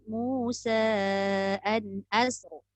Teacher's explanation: Kalau kita nak baca tebal Musa asr. Berhati-hati kalau nak tebal ditakuti sin jadi sad. As tu tetap nipis. Hamzah nipis, sin nipis, ra je tebal.